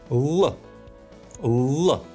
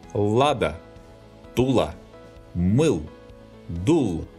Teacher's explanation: The letter L, similar to the Greek letter lambda, specifies the sound L. Articulating this sound, the tip of the tongue touches the upper front teeth.